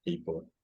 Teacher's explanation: I think the diphthong is very, very narrow in this case. People. Maybe it's not even a diphthong actually for this word.